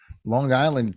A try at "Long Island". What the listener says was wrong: I like how you say the G so hard.